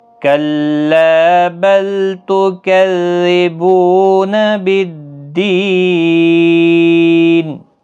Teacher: اور وقف کی صورت میں نون ساکن ہوگا، 3 سے 5 الف کی مقدار کے برابر کھینچ کر وقف کریں گے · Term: وقف بال اسکان